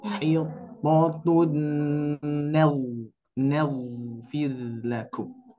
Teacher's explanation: huruf ghain dialirkan dan juga tebal